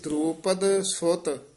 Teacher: ਕਈ ਦਰੋਪਦ ਤਤਾ ਬੋਲ ਜਾਂਦੇ ਨੇ ਦੋਵੇਂ ਦਦੇ ਬੋਲਣੇ ਨੇ